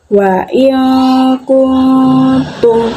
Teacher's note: Nah, pada satu potongan ayat ini terdapat dua bacaan ikhfa, yakni adanya nun mati yang bertemu dengan huruf kaf dan nun mati yang bertemu dengan huruf ta. Jadi cara membacanya adalah masuk dengan mendengung.